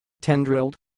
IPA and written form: ˈtɛn.drɪld (Tendrilled)